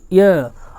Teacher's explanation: जब इनका उच्चारण करते हैं तो य में आधे इ की ध्वनि आती है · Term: अर्ध स्वर